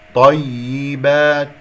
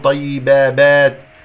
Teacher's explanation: يا مشددة فيها نبر، ونكسرها جيدا.